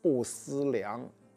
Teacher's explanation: 量在此当动词讲，读阳平啊